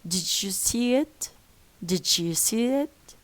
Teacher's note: when I have a d or a du followed by y I change both into J and J overwrites replaces both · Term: reciprocal